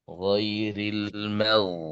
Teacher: ketika mengucapkan huruf ghain terutama ketika mati ya ketika sukun dia enggak betul-betul mati ya. dia tetap mengeluarkan suara terusan ya